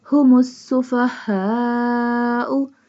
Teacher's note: Seen pronounced like a whistle sound.